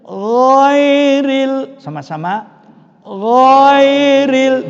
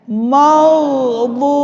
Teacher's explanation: Nah, pada akhir dari suratul Fatihah ini untuk diperhatikan dengan sebaik-baiknya, waktu kita membaca huruf ghain, baik pada waktu huruf itu berharokat atau ghain yang berharokat sukun, maka sifat daripada ghain itu isti'la, lidahnya terangkat, maka tunjukkanlah huruf itu dibaca tebal. dan ar-rikhwa, yaitu lunak, tebal dan lunak.